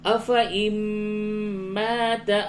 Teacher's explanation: نون ساکن کے بعد میم ہے، یہاں پہ ادغام مع الغنہ ہوگا